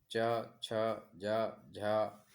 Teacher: जिन व्यंजनों के उच्चारण में जिह्वा का अग्रभाग कठोर तालु को स्पर्श करता है उन्हें तालव्य व्यंजन कहते हैं, जैसे च, छ, ज, झ, व या स।